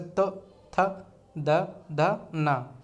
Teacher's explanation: दंत तो आप जानते ही हैं, दांत, कि जब कोई उच्चारण हम करते हैं तो दांत से हमारी जो जीभ है वो स्पर्श करती है तो उसे दंत कहते हैं। जैसे त, थ, द, ध, न, हमारी जीभ जो है स्पर्श कर रही है दांतों से।